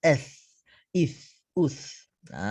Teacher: Dia kena keluarkan sedikit lidah bagi huruf sa ini. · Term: huruf tha